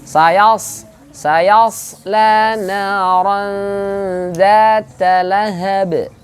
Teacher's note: Jadi kalau bilang huruf sa, bibir nggak boleh ikut maju.